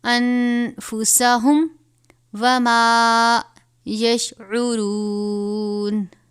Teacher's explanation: الا انفسہم، نون ساکن کے بعد حروف اخفاء میں سے فا آیا ہے تو یہاں پر ہم غنہ کریں گے